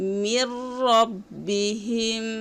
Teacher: নুনটি পড়া যাবে না, গুন্না ব্যতীত মিল করতে হবে